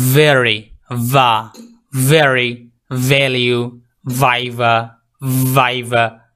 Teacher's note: এটার উচ্চারণটা একটু আপনার ডিপলি উচ্চারণ হবে, একটু ভাইব্রেট করবে, আর হচ্ছে এটার বাতাসটা একটু কম বের হবে। যেমন ভেরি, ভা, ভেরি, ভ্যালিউ, ভাইভা, ভাইভা, এই সাউন্ডটা হচ্ছে ভা এর সাউন্ড, ভা।